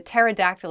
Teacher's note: Pterodactyl begins with a P, but we don't say the P. It just starts with a T sound.